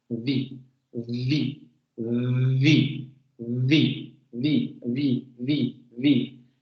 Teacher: Si escuchan detenidamente se pueden dar cuenta que existe ese momento vibratorio inicial